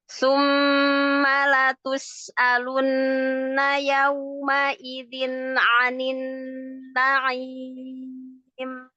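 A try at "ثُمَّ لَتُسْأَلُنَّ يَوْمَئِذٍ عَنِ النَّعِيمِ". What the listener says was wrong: latus hamzahnya disempurnakan latus alunna.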